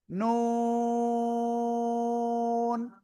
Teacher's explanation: জিহ্বার আগা তার বরাবর উপরের তালুর সাথে লাগাবেন, লাগিয়ে আপনার 4 আলিফ টেনে উচ্চারণ করতে হবে, নুন।